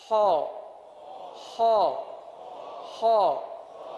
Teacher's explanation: ہو کو پر ادا کریں گے، باریک ادا نہیں کریں گے، پر ادا کریں گے